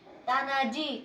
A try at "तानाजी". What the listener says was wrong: ताना बोलतेस मला तू